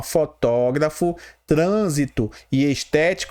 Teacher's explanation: Todas as palavras fotógrafo, trânsito e estético, elas têm a sílaba forte aonde? Na antepenúltima sílaba. Então ela é uma proparoxítona.